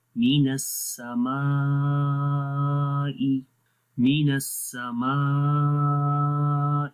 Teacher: آگے بھی الف ہے، الف سے پہلے میم، میم کو بھی باریک پڑھتے ہیں